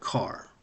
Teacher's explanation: Um the the how how a read is in the word car. The Russian sound ah is open and lax.